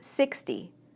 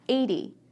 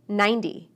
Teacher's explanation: the T in the tens sounds more like D